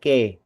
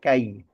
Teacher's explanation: Vokal a dan vokal i itu dibaca secara utuh berurutan a dan i seperti itu ya